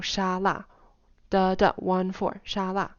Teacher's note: Shala so he's pronouncing Shala um in the stressed way and that is one of the words where both syllables would be stressed